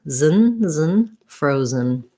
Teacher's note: this is the syllabic n which means if there's any vowel it's going to be a little uh sound a little schwa but just move right from your z to your n zen · i really basically have no vowel between my z and my n this is the syllabic n which means if there's any vowel